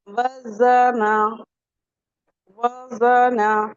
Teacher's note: تو ہم جب وزنا پڑھ رہے ہیں تو ہماری ٹنگ نیچے والے ٹیتھ کے کناروں سے اندر کی سائڈ سے لگ رہی ہے